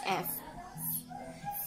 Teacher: your upper teeth is touching the lower lip and uh the air is flowing out no and no vibration